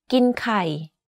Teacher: The first word of this sentence, กิน or eat, is in middle tone, but the last word, ไข่ or eggs, is in low tone. You can hear that my pitch went slightly lower at the end of this sentence.